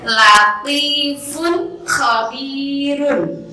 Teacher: Jadi tanwin dan nun sukunnya harus dibaca jelas. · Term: idhar